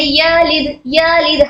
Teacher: हमने फतहा को जल्द पढ़ने की बजाय थोड़ा सा स्ट्रेच कर दिया। खींच कर पढ़ा।